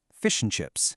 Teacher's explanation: The words are literally linked together, and that's what creates that smooth kind of musical rhythm. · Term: connected speech